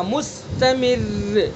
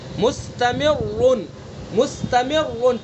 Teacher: یہاں پیش ہے تو اس لیے را کو پر پڑھیں گے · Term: را مشدد متحرک